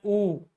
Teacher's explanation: जैसे ही हमने उ का उच्चारण किया तो हमारे होठ की जो संरचना बनी वो उ में सर्कल की बनी। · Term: वृत्ताकार